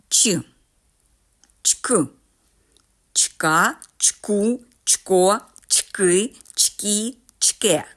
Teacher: Ми чуємо твердий приголосний ч